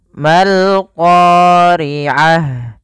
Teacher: membacanya langsung ke huruf yang terakhir disukunkan, yaitu huruf lam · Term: alif lam qamariyah